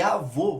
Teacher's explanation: a gente vê que a sílaba tônica é vô, porém o timbre dele é fechado. Por isso que a gente usa o acento circunflexo.